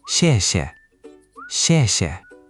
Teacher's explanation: That falling tone needs to be a bit more decisive, like a firm chop with your voice. "Xièxie". Make it really drop.